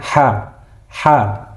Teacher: H ini keluarnya dari tenggorokan. Jadi bukan besar melainkan ha. Jadi pangkal tenggorokan. Suaranya sangat ringan.